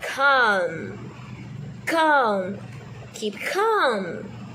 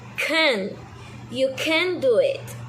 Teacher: rise the back of your tongue throw toward your throat nest stop the air with the back of your tongue and then release it with that strong poof